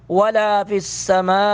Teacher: ماں پر مد متصل ہے، تین الف کے برابر اس کو کھینچیں گے